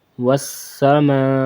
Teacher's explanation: میم الف مد زبر ما، والسما، 5 الف کے برابر کھینچ کے پڑھنا